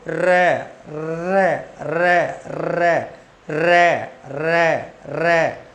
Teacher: उच्चारण के समय जीभ लुढ़क कर, लुढ़क कर मसूड़े को छू जाए, छू जाए, तो वहां कौन सा व्यंजन होता है? लुंठित व्यंजन होता है, प्रकंपित। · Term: लुंठित प्रकंपित व्यंजन